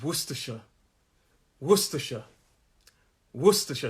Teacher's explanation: And the first syllable is where the stress is.